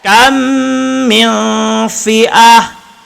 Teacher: Pada perkataan kam, kam ini dengung dua harkat. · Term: idgham mislain